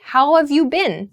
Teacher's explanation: Sounds like how have you been in everyday speech. So how have gets reduced to how of.